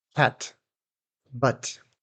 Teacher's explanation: Did you hear that little puff of air at the end of the t? cat but This is called the released t.